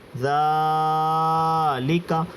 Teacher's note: ذال کھڑا زبر ذا، لام زیر لی، ذالی، کاف زبر کا، ذالکا۔ یہاں پر ذال کھینچا گیا، لام اور کاف کو نہیں کھینچا کیونکہ کاف کے اوپر زبر ہے، لام کے نیچے زیر، اس لیے ان دونوں کو نہیں کھینچیں گے۔